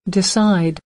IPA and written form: dɪˈsaɪd (Decide)